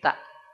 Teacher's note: ujung lidah nempel ke Pangkal dua gigi si atas pangkalnya ya jangan yang bawahnya tapi yang pangkalnya